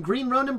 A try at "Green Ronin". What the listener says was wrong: It sounded like you said Green Runnin'.